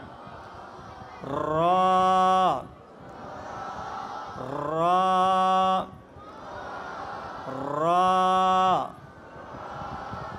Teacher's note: অর্থাৎ জিহ্বার আগাটা একটু কি খাবে, উপরের মাড়ির সাথে কি খাবে, বাড়ি খাবে। জিহ্বার আগাটা উপরের মাড়ির সাথে বাড়ি খাবে।